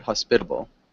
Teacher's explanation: we do often change that t sound for a D sound